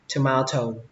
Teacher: Xuống giọng âm đầu tiên và lên giọng âm thứ hai, tomato. Ở đây là dấu huyền các bạn nhé, mình quên gõ dấu huyền vào đấy, tomato.